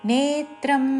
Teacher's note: నే దీర్ఘము దాని మీద ఆఘాతం